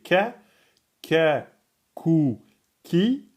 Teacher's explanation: le kef c'est pas vraiment au fond. On n' pas besoin d'emphatiser hein.